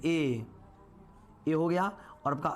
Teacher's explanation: कंठ तालु के मिश्रण से ए और ए बनता है